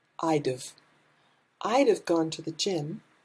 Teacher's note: instead of would have, we just say d've